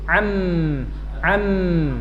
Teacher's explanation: Sedangkan mim syafatain dua bibir nutup am ya. Sebelum sempurna jangan dilepas amna amm.